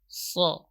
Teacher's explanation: So, ya, dan ini termasuk huruf itbaq, yaitu mana itbaq itu ilsaq, ya, huruf yang tebal. Posisi punggung lidahnya terangkat, kemudian suaranya terkumpul antara punggung lidah dengan langit-langit atas.